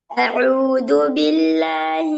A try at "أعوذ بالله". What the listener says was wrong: அவுது தல. திருப்பி அவுதுன்னு தான் வருது. அவுதுன்னு தான் வருது.